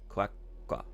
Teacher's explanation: It's like the little tsu in Japanese where you give it like a glottal pause, I think you would call it.